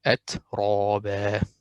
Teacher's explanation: So the ra muraqqaqa here will be atraba, which is not correct because ra has fatha. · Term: ra mufakhama